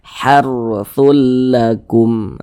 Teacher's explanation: dibaca tabkhim, dibaca tebal, sehingga pangkal lisan kita itu naik terangkat ke atas ketika kita mengucapkannya. Jadi ro-nya itu kita tebalkan.